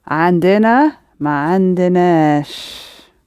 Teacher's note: the stress is going to move again when we put the ma and sh around the end of it, right to the end